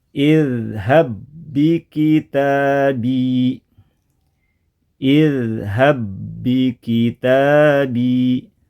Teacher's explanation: Yang pertama hilang suara pantulannya karena sudah dileburkan, dimasukkan, digabungkan ke ba yang kedua yang bertasdid. Kemudian untuk idgham ba ketemu ba ini tanpa disertai gunnah juga.